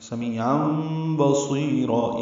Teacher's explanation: اور تنوین کے بعد با آنے کی وجہ سے چھوٹی میم جو لکھ دی گئی ہے وہی پڑھنی ہے. ان کی جگہ ام پڑھیں گے، یعنی نون کی جگہ میم کی آواز ادا کریں گے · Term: اقلاب